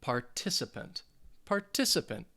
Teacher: it is four syllables participant and the stress is going to be on that second syllable